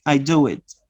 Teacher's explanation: in order to join the two vowels u and I, you insert the wa. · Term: insertion